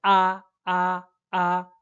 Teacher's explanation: o A no chinês ele é um A assim bem aberto mesmo